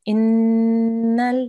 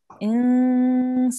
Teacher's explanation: we need to hold this nasal sound for two seconds